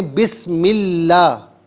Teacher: بسم اللہ کو صحیح پڑھیں، لام کو باریک پڑھیں